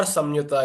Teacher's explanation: because the anuswara is followed by ya, we can turn the anuswara into ya, an anunasika, a nasal ya sound